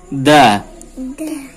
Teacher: Jadi ujung lidahnya ditempelkan di pangkal gigi dari atas, pangkalnya berbatasan dengan gusi. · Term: huruf dal